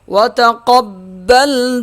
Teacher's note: با سختی سے ادا ہوگا کیونکہ اس کے اوپر تشدید ہے